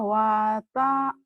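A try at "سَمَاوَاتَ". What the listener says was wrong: Ta-nya pendek. Samawata. Ayo, kayak Arum juga nih sama nih pendek-pendeknya nih.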